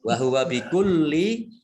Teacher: lam tasdid dibaca double lamnya